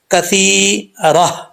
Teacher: اگر آپ وقف کریں گے تو کثیراتن ہے، یہ گولتا ہے، یہ جو ہا کی شکل میں اوپر دو نقطے ہوتے ہیں اس کو گولتا بولتے ہیں۔ تو جب وقف کریں گے تا ہا سے چینج ہو جائے گا